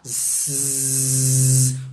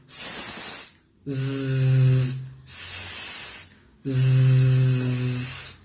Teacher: O Z também é fricativo alveolar. Zzz. Mesmo lugar, a diferença é que um é surdo, o outro é sonoro.